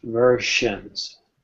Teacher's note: so the s in versions is sh